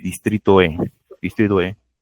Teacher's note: Vivo en el distrito E. Sí, se comió la D